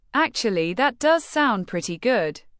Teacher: Stress does in that does sound pretty good to emphasize genuine agreement.